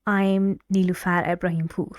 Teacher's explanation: Can you feel the last syllable in my last name more stressed and the intonation is falling?